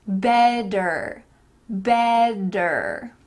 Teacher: often when there's a t surrounded by vowels those t's will change to D's let's practice that one more time better better But some North